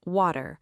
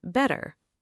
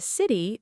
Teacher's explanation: In many American accents, the T in the middle can sound similar to a quick D. >> So, water may sound more like waiter. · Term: the American T